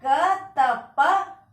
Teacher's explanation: तो यह क, त, प अघोष अल्पप्राण है। आप देख लीजिए, यह क वर्ण का पहला अक्षर है, तो वर्ण का पहला अक्षर अघोष है।